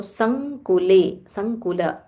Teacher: There is a half ng.